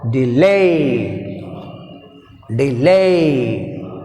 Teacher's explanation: Lay is second syllable. D is weak prefix. That's why we have stress on second syllable.